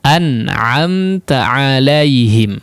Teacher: di sini diizharkan semua huruf nun dan mim sukunnya, ya, maka ini termasuk daripada tingkatan gunnah yang naqisah. Kadarnya kurang.